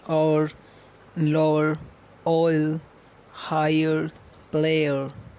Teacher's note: a consecutive sequence of three vowel sounds which glide into each other